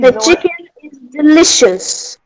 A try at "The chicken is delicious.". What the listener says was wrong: E o is não é bem is, é som de E, tá? E e Z, ó. Is. Is delicious, tá bom?